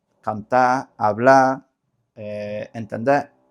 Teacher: La R eh al final de palabra se suele neutralizar, cantar, hablar, eh entender, o sea, no se suele decir esa r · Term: neutralización de consonantes finales, neutralización de consonantes